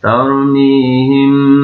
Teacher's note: ini baru mimnya mendengung, huruf mim sukun bertemu ba, namanya ikhfa syafawi